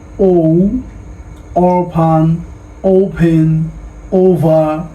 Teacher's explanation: ও আগে আমরা বলতাম ও, বাট ইট শুড বি ও, ঠোঁটটা একটু গোল হবে